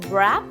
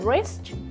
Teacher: We are not hearing individual sound of letter W because it's silent